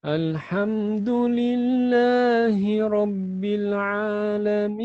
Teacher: Bagus suaranya, tapi pakai hidung. Tak boleh. Ya.